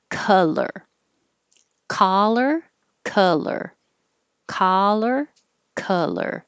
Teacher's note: your tongue is down low in the middle and pulled back